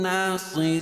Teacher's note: را کے نیچے زیر ہے, اور وقف کی صورت میں یہ مد عارض وقفی ہوگا, اس میں طول توسط قصر تینوں جائز ہے